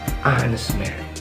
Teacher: Karena kata honest itu nggak dibaca H-nya.